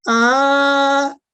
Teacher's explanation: पहली मिसाल में आप देखिए फतह के ऊपर एक खड़ी जबर है, इस खड़ी जबर को हम फतह इशबाइया कहते हैं और इसका टाइम है 2 सेकंड, तकरीबन 2 सेकंड। तो पढ़ते हैं इसको आ, फिर है अगला मा, 1 सेकंड, नून के ऊपर जस्ट फतह है तो ना, तो ऐसे इसको पढ़ेंगे मिला के आ माना की ताब।